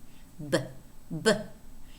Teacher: But b is an oral sound. The air is blocked momentarily, but it escapes out the oral cavity.